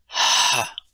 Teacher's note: represents the sound of an unvoiced H sound, or a voiceless glottal fricative, pronounced as ha.